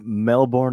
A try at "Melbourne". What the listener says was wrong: it's Melbourne. There's no born.